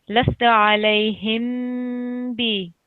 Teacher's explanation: I said that the meme has to be prolonged for about 2 seconds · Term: meme sakin